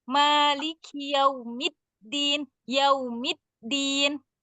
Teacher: Maliki yaumiddin. Mid ditekan lagi. Kenapa? Karena tasydid.